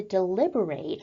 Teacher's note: we're looking at the verb form of the word deliberate, where we put the emphasis on the final syllable of the word.